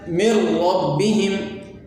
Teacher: یعنی یہاں پر ہم ادغام تو کریں گے لیکن اس میں غنہ ہم نہیں کریں گے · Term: ادغام بلا غنہ